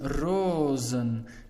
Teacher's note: the correct answer is rosen so you took away one o you had a long sound before your s and when you add en that s will become a z